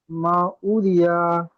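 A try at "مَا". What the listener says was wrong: মা মাউরিয়া নই, মা মিমটা টান হবে, ওটি টান হবে, তাহলে মা মিম টান হলো, ওটা টান দিয়ে পড়বেন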